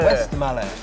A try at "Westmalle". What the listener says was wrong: Don't forget the E, man. It's not silence.